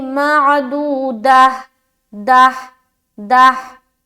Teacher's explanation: तो यहाँ पर जब हम पढ़ेंगे तो दाल हा ज़बर दा, जब भी गोल ता पर वक्फ करे तो एक बात का ख्याल रखे कि आपकी आवाज़ हा की सी आनी चाहिए, क्योंकि जब हम इसे हा बना दे रहे हैं और यहाँ पर जब हम वक्फ कर रहे हैं तो हमारी हा की आवाज़ आनी चाहिए, मालूम होना चाहिए कि हम हा अदा कर रहे हैं।